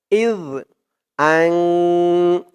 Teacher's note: জিহ্বার মাথা উপরের দাঁতে এর মাথার সাথে লাগবে জালের উচ্চারণটা করার সময়